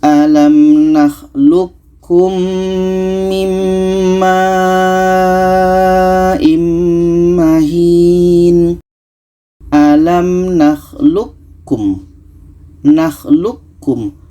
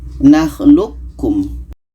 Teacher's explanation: qo ini kita masukkan ke ka qo ini tidak jadi qalqalahnya